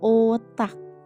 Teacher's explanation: lidah tidak menyentuh langit-langit mulut tapi sedikit masuk ke dalam dengan bentuk mulut membulat penuh.